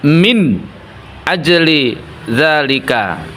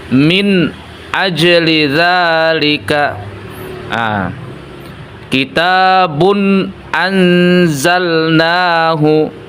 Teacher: Nah, terjadi bila nun bersukun atau tanwin bertemu dengan salah satu dari huruf hamzah, ha, ain, ha, ghain, dan kha. Maka nun bersukun atau tanwin dibaca dengan jelas atau apa adanya tanpa dengung ataupun gunnah. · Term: izhar